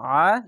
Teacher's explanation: আইন জবর আইনটিকে মোটা করে গলা চিপে পড়বেন